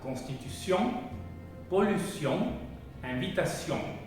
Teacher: Es un sonido nasal, es la N nasal, sin embargo sí se pronuncia un poquito. Es como si fuera una N corta, constitución, pollution, invitation.